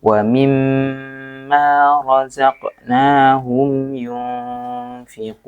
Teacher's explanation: agak ditekan ketika ada mim tasydid